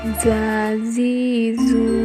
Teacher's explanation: dikeluarkan dengan ujung lisan hampir di atas gigi seri bagian bawah diucapkan dengan mengalir suara tanpa diiringi dengan udara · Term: huruf dza